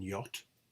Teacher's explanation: We have the palatal approximant y, as in yacht